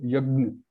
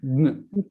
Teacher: It's not clearly Gna. It's because it's nasal. We are also using the nose.